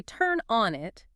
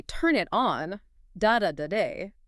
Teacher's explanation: The weak pronoun it is tucked safely away in the cozy middle of the phrase, protected on both sides by the strong verb and the strong particle.